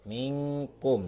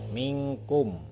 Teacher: ini akan dibacanya samar atau berbunyi eng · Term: ikhfa